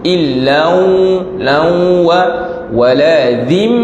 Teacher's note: idgham ma'al ghunnah, masukkan tanwin ke dalam waw berserta dengan dengung.